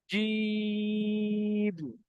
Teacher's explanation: জিমটা তিন আলিফ পরিমাণ টান দিতে হবে, এখানে তিন লেখা আছে। জিম, জিমের আওয়াজটা চেপে হয়, আওয়াজটা একটু মোটা করে হয়, এটা হলো জিমের একটা খাসা।